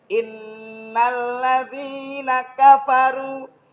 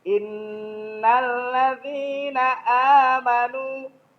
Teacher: Jadi kalau yang pertama itu lebih kuat tekanannya. Yang kedua itu sama-sama tasdid tapi landai.